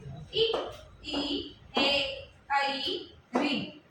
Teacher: अग्र स्वर में इ, ए, ऐ, ऋ हमारे क्रियाशील रहेंगे।